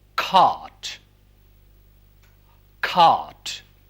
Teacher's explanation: Now we move towards the back of the tongue, and this vowel, which is a long vowel, but is produced at the back of the tongue, but not as back as cardinal vowel number 5.